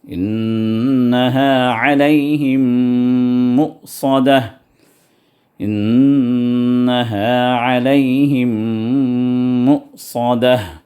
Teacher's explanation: غنہ تامہ، غنہ کاملہ کے۔ اب یہاں پر اس آیت میں نون بھی آ گیا، میم بھی آ گیا، تو دونوں جو ہے غنہ کاملہ ہیں، تو 2 حرکت تک دبا کے ان کو غنہ کرنا ہے